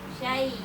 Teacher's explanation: Jadi mahrojnya ya diposisikan tengah lidah ke langit-langit.